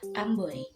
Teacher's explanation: O seolah-olah berakhiran Y, sehingga dilafalkan OI. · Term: Diftong OI